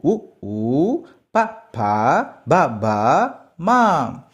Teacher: ఓష్ట్యాలు పెదవి సాయంతో పలికే అక్షరాలు